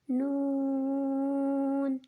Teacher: نون کو 3 الف کے بقدر کھینچ کر پڑھیں گے